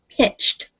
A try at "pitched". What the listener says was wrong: Pitched. Yeah. It sounds like a T on the end. Pitched.